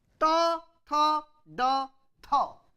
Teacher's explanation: unvoiced unaspirated retroflex, unvoiced aspirated retroflex, voiced unaspirated retroflex, voiced aspirated retroflex